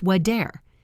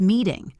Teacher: We flap it, which sounds almost like a very fast D. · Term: flap T